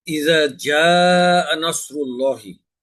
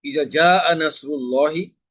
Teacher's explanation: এখানে 4 আলিফ মাদ আছে জায়ের উপরে, কিন্তু যদি আমি এখানে মাদ না করে পড়ি ইজা জাআ নাসরুল্লাহি, এখানে মাদের স্থলে হরকত পড়ায় অর্থের পরিবর্তন হয়ে যাবে।